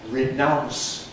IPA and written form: rɪˈnaʊns (renounce)